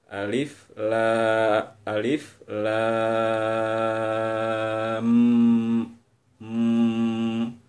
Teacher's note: cara baca idgham musyaddadah yaitu ditahan sebanyak selama dua ketukan jadi ketika bunyi lam masuk ke bunyi mim lam jadi m yaitu ditahan dua ketukan